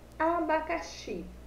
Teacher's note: Quando eu falo xi, meu som sai mais forte. Então, o xi é a minha sílaba tônica.